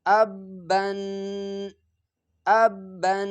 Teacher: اس کو ادا کرتے وقت ایک آواز پیدا ہو جاتا ہے ناک میں گنگنانے کی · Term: تنوین